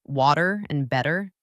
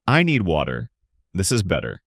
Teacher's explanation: Another key sound is the T between vowels, which often sounds like a soft D. Like in the words water and better. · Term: flap T